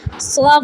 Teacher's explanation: فوا کھینچتے کھینچتے پھر فا سے ملا دینا ہے